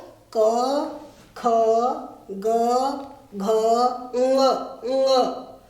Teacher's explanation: कंठ और नासिका से इसका उच्चारण करना है। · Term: कवर्ग